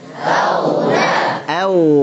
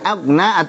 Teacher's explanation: Auna hanya tipis, ghoinya tebal dan alirkan. Punya sifat rakhawah.